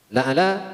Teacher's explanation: dibaca panjang karena mengandung hukum mad tabi'i yang ditandai dengan harokah berdiri